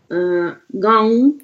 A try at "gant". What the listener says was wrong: Еще глубже гон, гон.